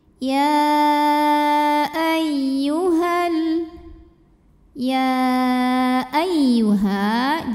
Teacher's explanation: Ya ay, ya tasydid yang sebelumnya tidak didahului tanwin atau nun sukun, maka cara bacanya tidak perlu ditahan karena ini bukan idgham bi gunnah. Ini cukup kita pakein nabar. Artinya ada intonasi yang kita naikkan.